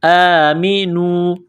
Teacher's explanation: کڑا زبر ہے، 1 الف کے لمٹ میں کھینچنا ہے.